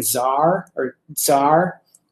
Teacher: it's got the the t sound like the stop or plosive sound uh and then turning into a like a fricative s so it's that's uh sound like a ts or a usually